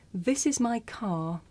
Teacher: in the first sentence this is my car you don't hear the r sound because it's at the end of the sentence